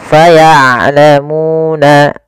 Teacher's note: Syiddah itu dia tertahannya suara, rokhawah mengalir suara. Maka ain jangan terlalu dialirkan suaranya tapi tidak juga ditahan. Maka faya'lamuna, seperti itu. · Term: sifat bainiyah